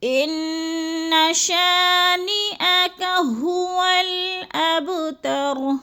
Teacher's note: شا کو تھوڑا سا ہم نے کھینچنا ہے، ادھر الف مدہ ہے